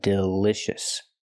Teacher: we cannot use the long e sound like green beans we use the short I sound